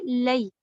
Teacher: लाम का जबर सीधा रखते हुए या को आप लीजिए लई, इसी को कहते हैं लीन, यानी नरमी से दोनों को आपने अदा किया